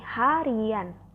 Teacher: Contoh lain seperti yang telah disebutkan sebelumnya, yaitu dalam proses penyembuhan sufiks an, pada kata dasar hari akan muncul bunyi semivokal Y, yaitu pada kata hari ditambah an akan terdengar bunyi harian.